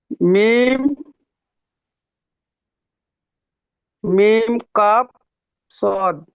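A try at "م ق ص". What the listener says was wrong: সুন্দর বলেছেন, টানটা কেন দিলেন না? আসলে যে টান সে টানতে হবে, অক্ষরের টান। মিম কাফ সদ, বলুন।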